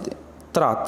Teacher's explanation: अब जैसे त्रा किससे मिलकर बना है? आधा ता है, ता का मतलब हुआ दंत और रा हुआ मूर्धा, रा मूर्धन्य है तो दंत मूर्धा हो गया